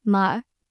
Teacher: fourth tone, which is a sharp, falling sound, like you're giving a quick command, ma.